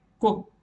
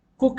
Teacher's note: पिछले पेज में हमने बताया कि ऊ को डबल ओ या यू लिखेंगे, पर अगर आप देखोगे तो एक शब्द है कुक, यहाँ पर डबल ओ है पर इसका उच्चारण कुक नहीं बल्कि कुक है, यानी बड़े ऊ नहीं बल्कि छोटे ऊ का प्रयोग हुआ है